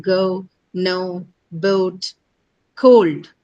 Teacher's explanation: Two sounds, a consonant and a vowel combination. The second sound, which is the vowel, is actually a diphthong in these words